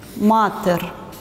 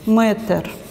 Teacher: дорийцы произносили с исконным долгим гласным а и писали его вот так матер вот здесь произносился долгий а